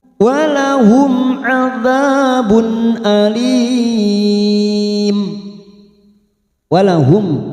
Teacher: mim sukun bertemu Ain kita baca jelas namanya idhar syafawi kita baca jelas tanpa mendengung